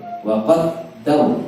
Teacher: Kemudian wa qaddar, ra-nya dia tafkhim, tebal.